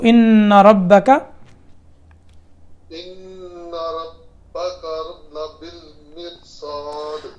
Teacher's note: रा साकिन के बाद उसी कलमे में मोटा लफ्ज़ आ रहा है, तो इसलिए रा जो है वो मोटा होगा